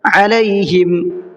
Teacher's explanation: علیہم، عین نکالنا ہے، حمزہ نہیں پڑھنا ہے